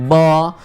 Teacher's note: जब हम ब बोलते हैं, ब देखो ब बोलेंगे ब, तो लिप्स के द्वारा हमारा जो फ्लो आ रहा है हलक से वो रुकता है